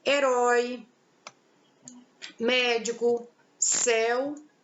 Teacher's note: sinto a a sílaba mais forte da palavra então em dia com a pronúncia aberta um timbre aberto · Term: acento agudo